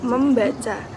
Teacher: Contohnya yaitu menca menjadi membaca. Bunyi N dari awalan men berubah jadi M karena ikut menyesuaikan dengan bunyi B di belakangnya. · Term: asimilasi fonetik